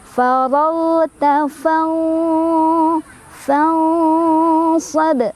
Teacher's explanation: hati-hati ghain tidak boleh mantul ya.